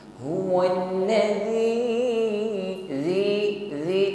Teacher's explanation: pengucapan huruf zal tanpa disertai dengan bunyi desis, bukan zi, bukan wallazi, ya.